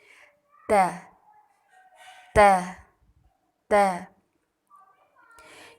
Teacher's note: زبان کی نوک کو سامنے والے اوپر کے 2 دانتوں کی جڑ سے لگا کر باریک آواز میں پڑھیں گے